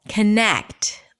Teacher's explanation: It's the second syllable, connect, longer, louder, higher in pitch. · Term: primary stress